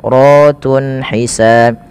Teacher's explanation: Kemudian ratun ada mad tabi'i pada lafal ra, dan ra-nya di sini dibaca dengan tafkhim karena ra-nya dibaca berharakat fathah, maka dia dibaca dengan tebal.